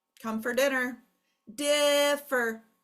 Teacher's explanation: you can really clearly hear the accent is in the first syllable not the second syllable